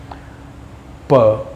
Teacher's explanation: प को बोलने के लिए दोनों लिप्स का यूज़ किया जा रहा है